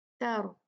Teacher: را ہیوی ہوگا کیونکہ اب یہ ساکن ہے لیکن اس سے پہلے تا پہ فتحہ ہے ، زبر ہے تو یہ ساکن جو ہے را یہ ہیوی